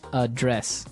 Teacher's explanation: but you pronounce it differently so the verb address has the the stress on the second syllable